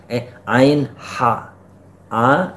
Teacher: Kalau a ha di sini dia udah agak dekat ke dada, tadi di pangkal tenggorokan, a ha. Nah, kalau wastul halq itu, wastul halq itu di tengah tenggorokan, hurufnya ain.